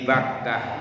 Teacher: antara ba sama mim itu menghasilkannya sama-sama menggunakan dua buah bibir, sehingga dalam istilah bahasa disebut dengan konsonan bilabial